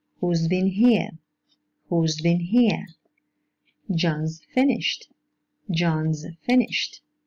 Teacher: we use a voiced alveolar fricative sound because the preceding sounds are voiced. In the last two examples, the same word is pronounced with a voiceless alveolar fricative sound because the preceding sounds are voiceless.